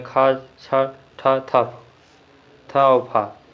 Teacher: महाप्राण अघोष वर्ण है खा छ ठ थप थ और फा।